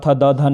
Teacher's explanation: आपकी जो जीभ है वो दांतों के साथ टच होती है, दैट मीन्स तवर्ग, यानी कि त, थ, द, ध, न की जो ध्वनियाँ हैं वो दंत से शुरू होती हैं।